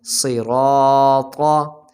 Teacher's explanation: را پر جب زبر آ جائے را بھی موٹی پڑھی جاتی ہے